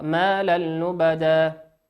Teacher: واللام من حروف الإدغام بغير غنة